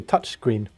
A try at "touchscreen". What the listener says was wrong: Touchscreen. Yes, it sounds like touch cream.